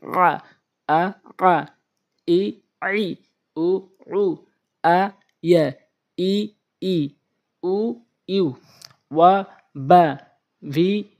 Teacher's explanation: আইনটা হলো হলকের মাঝখান থেকে